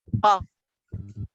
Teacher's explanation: place इसकी labial है, यानी होंठ बाइलेबियल, और जो मैनर है वो प्लोसिव है, यानी धमाके से निकल रही है